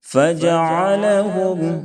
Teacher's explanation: فَجَعَلَهُمْ عین کو درمیانی حلق سے ادا کریں تاکہ حمزہ سے نہ بدلے